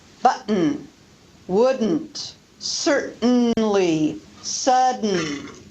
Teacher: these are examples of syllabic n and syllabic l that occur without a vowel